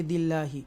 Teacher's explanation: اللہ کو ترقی کے ساتھ اللہ کے نام کو پڑھیں گے, باریک پڑھیں گے